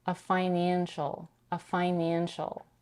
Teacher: merges the two consonants together and pronounces it as a one elongated f